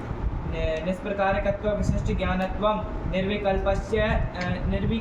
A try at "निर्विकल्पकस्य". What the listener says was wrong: काय अक्षरों को खा जा रहे हो तुम, जैसे लिखा उसका लक्षण बोलो, निर्विकल्पकस्य लक्षणम, आया कि नहीं आया, हो गया,